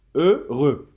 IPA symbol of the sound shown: ɶrø